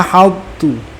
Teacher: Untuk idgham ta sukun yang bertemu dengan ta, huruf ta-nya masih dengan isti'la'nya, namun tanpa qalqalah